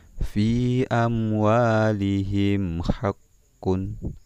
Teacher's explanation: Jadi di situ ada huruf mim sukun bertemu dengan waw. Jadi dibaca jelas. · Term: izhar syafawi